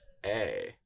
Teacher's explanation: This diphthong is pronounced, ei, as in vein.